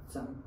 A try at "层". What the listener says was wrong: 层 You don't use your nose at all. Don't touch your nose.